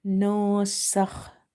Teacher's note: Kha is from the upper part of the throat as well as it's heavy. So you have to read it heavy.